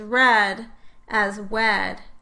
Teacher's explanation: the process of gliding in a child of 9 or 10, in which the child would produce a target word such as red as wed.